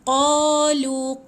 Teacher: Qa panjang ada alif, lu pun panjang ada waw. Okey, 2 harakat.